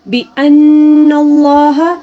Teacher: لفظ اللہ سے پہلے نون کے اوپر جو زبر ہے تو لفظ اللہ کو ہم نے اس زبر کی وجہ سے موٹا پڑھنا ہوگا